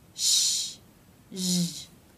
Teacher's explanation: These two sounds are paired together because they take the same mouth position. Sh is unvoiced, meaning only air passes through the mouth, and zh is voiced, meaning you make sound with your vocal cords. To make this sound, the teeth come together, the corners of the lips come in, and the rest of the lips flare. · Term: sh and zh consonant sounds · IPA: /ʃ/ và /ʒ/